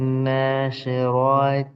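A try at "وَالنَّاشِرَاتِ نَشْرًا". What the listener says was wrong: Nah, tambah dengung.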